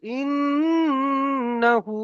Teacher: নুনের উপরে তাসদিদ এসছে ওই জন্য করে এক আলিফ পরিমাণ গুণনা করে পড়তে হবে।